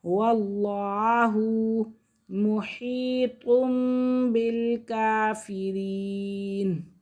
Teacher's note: لفظ اللہ کی لام سے پہلے زبر ہے تو اس لیے لفظ اللہ کی لام کو پر کریں گے